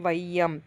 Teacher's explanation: முதல்ல வர ஐகார குறுக்கம் எடுத்துக்காட்டு வையம். இது ஒலிக்கும் கால அளவு 1.5 மாத்திரை.